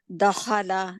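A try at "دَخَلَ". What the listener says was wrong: लाम को खींचना नहीं है दखल है दखल है अप्लाई नहीं हो रहा है ना, कलकला अप्लाई नहीं हो रहा। कोई हरकत वाला कलकला का लेटर कोई भी हरकत वाला हो तो उसके ऊपर असूले कलकला अप्लाई नहीं होता, असूले कलकला को वहां पे नहीं लागू करना, ठीक है, अप्लाई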